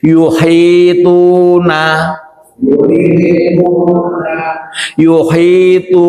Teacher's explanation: tu panjangnya dua harakat. Jadi tunya jangan dilebihkan. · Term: mad asli